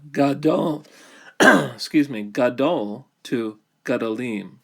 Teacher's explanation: It reduces from a longer vowel to a vocal schwa. So we go from gadol, gadol to gadolim.